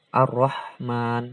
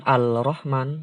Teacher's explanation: alif lam syamsiah di idghomkan dileburkan dimasukkan ke huruf selanjutnya jadi lemnya nggak dibaca jelas lamnya itu dileburkan di idghomkan ke huruf selanjutnya langsung masuk ke Roro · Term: Idgham Syamsiah